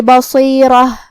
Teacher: پھر یہاں حرف الرا ہے اور اس پہ زبر ہے، یہاں بھی را کا حکم ہے تفخیم، لہذا ہم را کو موٹی آواز میں ادا کریں گے. آخری میں تاء مدورہ ہے اور اس پہ تنوین پیش ہے. · کلمت بصیرہ میں حرف الصاد حروف التفخیم میں سے ہے، لہذا ہم یہ حرف کو منہ پھلا کے بھاری آواز میں ادا کریں گے. پھر یہاں حرف الرا ہے اور اس پہ زبر ہے، یہاں بھی را کا حکم ہے تفخیم، لہذا ہم را کو موٹی آواز میں ادا کریں گے.